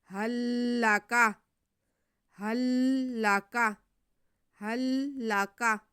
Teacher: ہا کو لام کے ساتھ ملا دیں گے. هل لك هل لك هل لك، کاف باریک ہے.